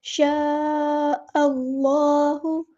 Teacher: اللہ، حمزہ کو ہم نے لام کے ساتھ ملا دینا ہے۔ شاء اللہ، اللہ کا لام ہم نے یہاں پر پڑھنا ہے، حمزۃ الوصل ہمارا ڈراپ ہو جائے گا